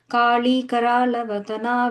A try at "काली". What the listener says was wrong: Second one, and it's just like I said last time, it's like not the la, just a regular la. Kali, Karala, Vadana.